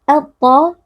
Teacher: Al-ta alif lam syamsiyah karena alif lam bertemu dengan salah satu huruf syamsiyah yaitu huruf ta dibaca dengan mengidghamkan atau meleburkan alif lam ke dalam huruf ta. Al-ta huruf tebal dibaca dengan mengangkat pangkal lidah.